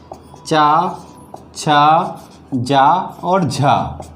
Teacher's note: यानी ये स्पर्श भी करते हैं और घर्षण के साथ में भी बाहर निकलते हैं। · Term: स्पर्श संघर्षी व्यंजन